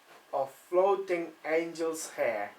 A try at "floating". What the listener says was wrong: Right, longer with the vowel again. Floating. Floating. It's a very onomatopoeic word. Floating. Right, try not to drop your pitch at the end of the word. Longer with the O. Floating. Floating. Floating. On a level with your pitch.